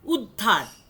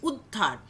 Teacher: ধয়ের ওপরে স্ট্রেস পড়ছে, কেমন, উদ্ধার। উটা খুব আস্তে উচ্চারণ করেছি